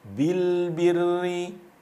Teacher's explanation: Ra-nya dibaca tipis karena di sini ada harokat kasrah